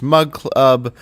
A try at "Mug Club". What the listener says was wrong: And you put 3 syllables in Mug Club.